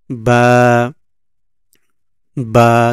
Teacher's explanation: দুই ঠোঁট থেকে বা উচ্চারণ করার সময় দুই ঠোঁট ক্লোজ হয়ে উচ্চারিত হবে